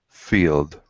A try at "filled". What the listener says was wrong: Okay, give me a short I. Filled.